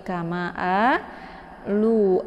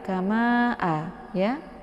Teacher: Cara membaca mad jaiz munfasil ini adalah dengan memanjangkannya 4 sampai 5 hitungan. Anda harus konsisten dengan napas Anda.